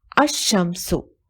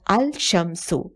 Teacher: It is pronounced as ash-shamsu, not al-shamsu. Lam is not pronounced because it is assimilated to sun letter at the beginning of the word. As a result, the consonant at the beginning of the word is doubled and the assimilation is indicated by the shadda on the first letter of the noun.